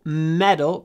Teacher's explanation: The stress is on the first syllable.